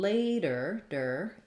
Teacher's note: later ends with the ER so my tongue is back it's pulled back in tight it has that strong ER sound